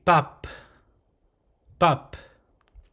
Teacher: the initial onset doesn't have an aspirated, breathy puff sound, but as you are closing, you'll hear more like a breathier sound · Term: closed syllable